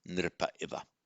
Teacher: So you've got the ah followed by an I. What happens? Just the visarga drops.